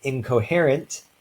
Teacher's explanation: this is because the incoherent is a velar stop so basically the nasal sound in this in prefix tries to become more like the sounds that follow it · the regular alveolar nasal becomes a velar nasal. This is because the k in coherent is a velar stop.